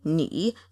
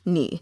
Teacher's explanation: that's the third tone, the vocal fry